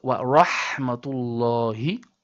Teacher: As you can see, the first ha we discussed earlier comes from the middle throat, so we say wa rahmatu, and then the last ha in the word Allah is from the bottom throat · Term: bottom throat ha